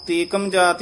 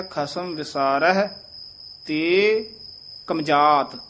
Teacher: ਤੇ ਥੋੜਾ ਜਿਹਾ ਰੁੱਕ ਕੇ ਯਮਕ ਲਾ ਕੇ ਬੋਲਣਾ ਆਮ ਤੇਕਮ ਜਾਤ ਹੀ ਕਹਿ ਦਿੰਦੇ ਹਨ। ਸ਼ੁੱਧ ਬੋਲਣਾ ਹੈ ਖਸਮ